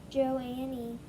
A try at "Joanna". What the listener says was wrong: Not Joanne. That's not an E at the end, that's an A. Joanna. I don't know why, but you guys like to flip letters. And so even though it's A-N-N-A, a lot of you would have read N-A-N-A. Joanna. But that's not the order the letters are in. It's J-O-A-N-N-A.